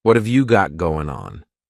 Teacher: going to be pushed together what have you got going on that final g in the word going is going to be cut off